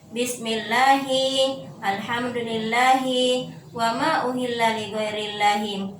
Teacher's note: lam tarqiq atau muraqqaqah yang berarti ya tipis